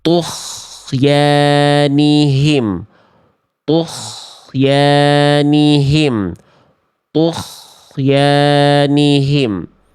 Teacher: gin sukun kita bocor nafasnya keluar angin ya. Kalau keluar angin atau nafas dia berubah menjadi huruf ko. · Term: ghain sukun